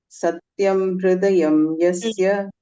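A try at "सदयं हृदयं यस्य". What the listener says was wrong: Satyam nasti atra. Punaha patatu.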